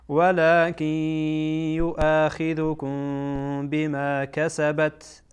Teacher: اینجا میم ساکنه بعدش با آمده اخفا میکنیم میم ساکن را